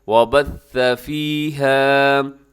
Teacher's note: اس میں ثا ہے، سا کے اندر سیٹی نہیں ہے، سیٹی سے بچیے گا